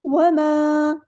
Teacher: یہاں پر ہم مد اصلی کریں گے. 2 کاؤنٹس لمبا کریں گے.